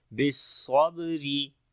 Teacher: کو موٹا پڑھیں گے، صفت حمس اور صفیر دونوں آئے گی، با کے اوپر قلقلہ کریں گے، کمزور قلقلہ ہوگا، را کو باریک پڑھیں گے